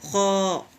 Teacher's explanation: خ میں خرخری آواز چاہیے، نکلے گی حلق سے